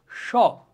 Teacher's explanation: এই যে শীষ দেওয়ার মতো যে হয় এই কারণে এগুলোকে কি শীষ ধ্বনিও বলা হয়